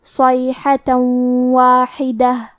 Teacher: آخری میں تا پہ تنوین زبر ہے، پھر حرف الواو ہے کلمت واحدہ، واو حروف الادغام بغنہ میں سے ہے تو ہم یہ حکم کو غنہ اور تشدید کے ساتھ ادا کریں گے